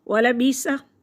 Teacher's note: حمزہ ساکن جھٹکے کے ساتھ پڑھیں گے